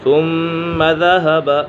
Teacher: ثم ذهب، یہاں پر میم مشدد ہے، میم مشدد میں ہمیشہ غنہ ہوتا ہے۔